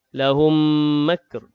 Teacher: mim mati bertemu dengan mim. Idgham mislain, dengung juga 2 harakat